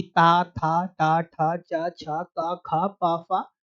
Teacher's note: जिनके उच्चारण में स्वर तंत्रियां झंकृत ना हो, वो अघोष कहलाएंगे। पहला वर्ग और दूसरा वर्ग, पहला वर्ग और दूसरा वर्ग दोनों अघोष की श्रेणी के अंतर्गत आते हैं। · यानी कि ता, था, टा, ठा, चा, छा, का, खा, पा, फा अघोष हैं। इनके उच्चारण में स्वर तंत्रियां झंकृत नहीं होती।